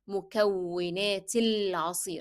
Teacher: I skipped the sound of ألف in العصير